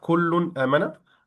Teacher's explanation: we're gonna pronounce the noon sakin or tanween clearly, with no hiding, with no merging, with no converting to something, just clearly, just the normal thing.